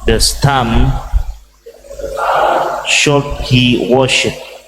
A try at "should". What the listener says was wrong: Should, the O is not said, silent, only you it is said. So should, not shout, should.